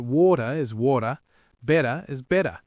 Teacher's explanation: In the middle of words, especially between vowels, it often gets softened to a D sound. It's called T flapping.